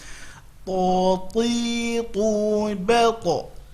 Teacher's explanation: Salah, dia bukan huruf hamz. Maka kita berusaha penyebutannya tidak mengeluarkan hamz pada penyebutan huruf ta.